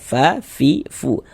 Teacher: Karena di antara sifat huruf fa itu memiliki sifat hams.